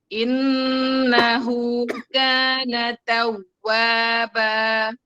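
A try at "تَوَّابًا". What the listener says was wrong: Kayak berhenti ya. Tawwaba. Tawwaba tetap ngalir suaranya. Tawwaba. Yang pastinya di wawu itu nggak putus suaranya, nggak tawwaba, harus tawwaba. Harus tetap ada alirannya.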